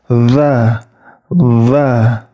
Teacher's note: huruf dalzal itu ujung lidahnya bertemu dengan ujung gigi seri atas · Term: huruf zal